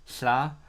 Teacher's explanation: It's a sound where the air comes out from the two sides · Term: the ll